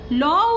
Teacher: ল উচ্চারণের সময় জিভের দুপাশ দিয়ে বাতাস বেরিয়ে যায়, সেজন্য লকে বলা হয় পার্শ্বিক ধ্বনি।